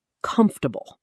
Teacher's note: 3 syllables. The fort part shrinks dramatically. The stress is on the first syllable, comf.